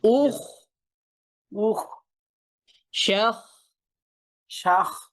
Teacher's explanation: ইখ, এই ক্ষেত্রে হচ্ছে খ যেহেতু আবার হেভি লেটারের অংশ, এই ক্ষেত্রে আমাদের আওয়াজও মোটা হইতে হবে, বাতাসও ছাড়তে হবে, কারণ এছাড়া না তো হারফটা স্পষ্ট হচ্ছে না।